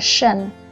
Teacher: Nhưng khi chúng ta có cái suffix là shun, lưu ý là sh này là một âm voiceless. Để kiểm tra thì mình chỉ cần đưa tay sờ lên cổ là mình thấy đây là âm voiceless.